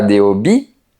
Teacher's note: Remarque qu'on ne prononce pas la lettre H, elle est silencieuse.